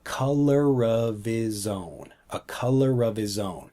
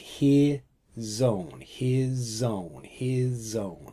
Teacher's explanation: we blend the sounds of the words together especially when we have a consonant so we have like of his the s from his and then the O from own so we don't say his own we say like he zone